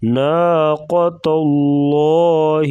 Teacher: لفظ اللہ کے لام سے پہلے زبر آ گیا ہے تو یہاں پہ اس کو موٹا کریں گے